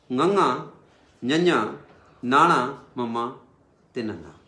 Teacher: ਫਿਰ ਆ ਗਏ ਸਾਡੇ ਕੋਲੇ ਅਨੁਨਾਸਿਕ ਅੱਖਰ, ਉਹ ਅੱਖਰ ਜਿਨ੍ਹਾਂ ਦੀ ਆਵਾਜ਼ ਨੱਕ ਰਾਹੀਂ ਗੁਣਗੁਣੀ ਆਵਾਜ਼ ਆਵੇ